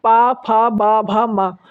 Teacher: माँ में हमारे दोनों ओठ आपस में मिल रहे हैं तो ये दोस्तों ओष्ठ वर्ण हो जाएंगे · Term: ओष्ठ व्यंजन